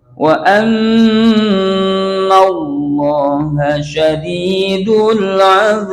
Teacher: Setelah panjang azab itu baknya terakhir namanya qalqalah kubro, dibaca pantulannya kencang yang gede ya.